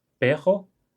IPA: peʁo